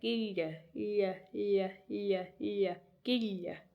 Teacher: In a lot of your slender consonants, you'll hear a slight y sound, right? It's not a fully pronounced Y or anything like that.